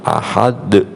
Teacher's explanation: huruf qalqalah yang matinya mendatang disebabkan dibaca waqaf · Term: qalqalah kubra